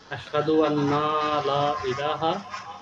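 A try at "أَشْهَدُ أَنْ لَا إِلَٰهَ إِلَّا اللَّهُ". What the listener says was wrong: আন হবে না তো। এখানে দেখেন, আমি এটা একটু সবার জন্য ক্লিয়ার করি। এই যে হামজা সরাসরি লামকে ধরবে। আশহাদু আল্লা ইলাহা।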